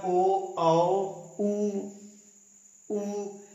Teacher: वृत्त मुखी जिसमें हमारा मुख की स्थिति वृत्त की तरह सर्किल की तरह गोल बन जाती है